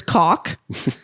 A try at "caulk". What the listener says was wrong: you have to emphasize the L when say